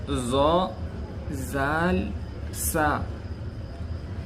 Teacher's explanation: زبان کی نوک اوپر سامنے والے دو دانتوں کے کنارے سے ادا ہوتے ہیں